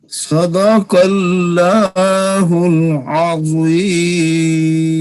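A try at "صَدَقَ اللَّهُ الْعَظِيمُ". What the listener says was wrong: ایسا آپ کا قاف صحیح نہیں نکلا، پھر پڑھیے. صاد کی سیٹی اور اس کو موٹا کریں اور قاف کو بھی پر کریں. صدق اللہ، اور پھر اللہ کے لفظ کو بھی موٹا کریں. صدق اللہ العظیم.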